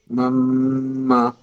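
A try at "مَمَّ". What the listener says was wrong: മമ്മ മദ്ദും കൂടി കൊടുക്കണം. മമ്മ കട്ടാക്കി പോകണ്ട. നൂന് നേരത്തെ പറഞ്ഞ പോലെ മീമ് പറഞ്ഞ പോലെ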